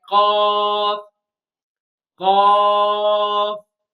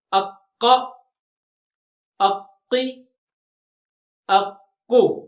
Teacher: When back of the tongue rises and touches to the soft palate, then it will pronounce bold Qaaf.